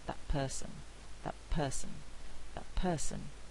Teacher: an alveolar consonant but it's produced with lip closure and so it's more like a bilabial consonant